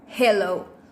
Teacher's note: With manner of articulation, fricative, and place of articulation, glottal.